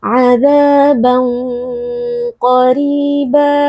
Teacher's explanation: Nah, di sini perlu diperhatikan karena tanwinnya bertemu dengan huruf yang tebal yaitu huruf qaf, maka ikhfanya juga ikut tebal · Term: ikhfa hakiki